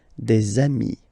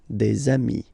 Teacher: if you make the liaison, so the link between the two, you will get des amis